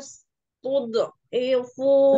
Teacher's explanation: Dot itu mantul tapi ditebalkan